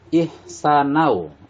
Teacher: Nau di sini ada tanwin bertemu dengan waw. Cara membacanya harus dimasukkan suara nun matinya kepada huruf waw, dinamakan idgham bi gunah